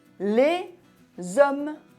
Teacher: on prononce le s final devant une voyelle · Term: h muet